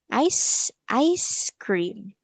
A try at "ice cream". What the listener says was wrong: Okay, very good. Good job.